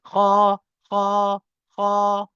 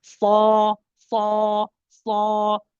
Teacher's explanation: when I say kha, I open my lips separate quite a bit. Kha, kha, kha. But when I say sad, my lips are even less open.